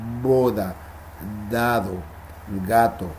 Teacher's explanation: las sonoras si pusiéramos nuestros dedos en la garganta podríamos sentir como vibra cuando se ve para boda dado gatos vibra en las cuerdas